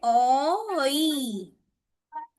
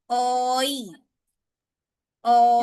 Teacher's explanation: ओ बोलने पे मुंह आगे की ओर राउंड शेप बना रहा है, फिर ई बोलने पे ये स्ट्रेच हो रहा है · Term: दिफ्थोंग